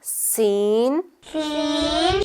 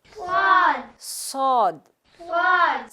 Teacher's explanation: سین میں بھی سیٹی کی آواز ہے, صاد میں بھی ہے, لیکن سین باریک آواز ہے